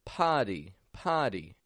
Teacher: people from all over are omitting the r from the word party and they're making it sound like potty